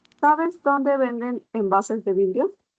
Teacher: las interrogativas directas totales terminan con Tono ascendente